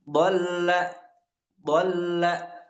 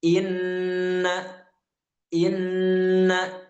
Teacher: Kalau huruf apa yang lain selagi nun dan mim itu hanya dolla dolla sebentar saja. Tapi untuk nun dan mim kita lebih lama sedikit. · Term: ghunah